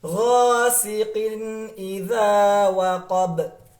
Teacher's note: Tetapi huruf mim bergetar di hidung. Kalau huruf gha itu bergetar di tenggorokan.